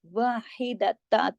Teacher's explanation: तो इख्फा हो रहा है यहाँ पे, तो ता दो जबर तन का इजहार नहीं करेंगे, थोड़ा सा वाहिदता, आवाज नाक में चली जाएगी